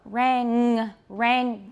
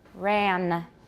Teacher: can you feel the back of your tongue touching your soft palate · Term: velar